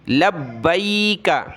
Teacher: لام کو با کے ساتھ ملایا، با کو یا کے ساتھ، با کو سخت کریں گے کیونکہ اس کے اوپر تشدید ہے